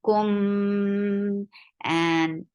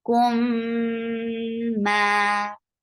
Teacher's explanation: give a nice gunna because this is akmal gunna here, and then it is 2 counts long too.